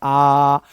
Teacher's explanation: विवृत्त स्वर में मुंह पूरा खुल रहा है। जितना मैक्सिमम खुल सकता है, आप इसको ऐसे बोल सकते हो आ ऐसे नहीं इसको बोलना है।